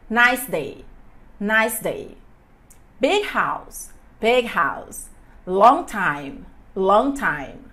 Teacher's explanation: Então vamos dar uma olhadinha. Regra: quando um adjetivo é seguido por um substantivo, o substantivo é enfatizado.